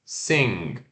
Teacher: S e curto, e o N que a sua língua encosta no céu da boca que vai travar, né, o N